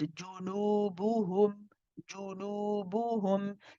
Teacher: We make sure that the lips are circled and we make sure all of them are making an equal oo sound. Despite the noon having a wow after it and being prolonged, it's still the same oo sound, just longer.